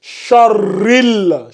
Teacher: Une lettre lunaire. On ne prononce pas le alif, mais on prononce le lam.